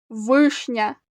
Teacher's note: слова подано звукову схему вишня два склади вишня наголошений перший склад А як ми вимовляємо перший приголосний в вишня правильно твердо